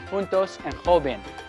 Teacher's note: j is pronounced like a strong english h